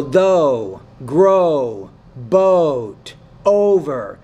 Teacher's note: with the O sound, you need to make it a little bit longer.